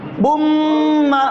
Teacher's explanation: کس کو ملایا ہم نے؟ نون ساکن کی آواز کو میم کے ساتھ ملا دیا۔ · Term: ادغام